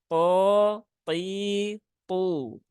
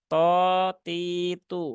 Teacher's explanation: Ini huruf thnya harus tebal